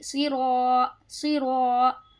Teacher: صاد کو موٹا پڑھیں گے، کیوں؟ کیونکہ یہ حروف مستعلیہ میں سے ہے · را کو بھی پر پڑھیں گے، کیوں؟ کیونکہ یہاں پہ زبر ہے. اور الف مدہ کا قاعدہ ہے، کھینچیں گے بھی.